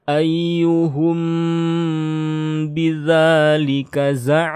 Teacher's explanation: kalau mim sukun ketemu ba, nah ini baru digunnahkan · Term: ikhfa syafawi